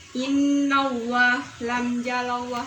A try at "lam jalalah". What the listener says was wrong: Lam jalalah, bukan jalallah ya. diawali fathah.